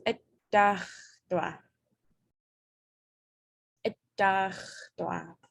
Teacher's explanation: that T, you're actually going to say it twice because it's automatically geminated